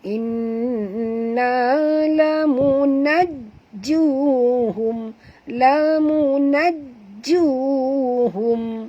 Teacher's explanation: dekat jim ada tasydid, maka kita kena baca tekan atau penjut